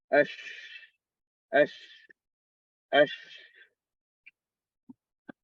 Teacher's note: The tongue is coming close to the upper palate, but not touching. Coming close, but not touching, and you don't vibrate the vocal cords, only breath. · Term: sheen